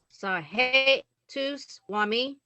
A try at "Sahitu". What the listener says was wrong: This sound, you're still trying to make a E sound. Sahi. Just the H.